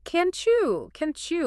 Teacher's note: When a hard T sound crashes into a Y sound, the friction creates a chi sound, like the chi in cheese.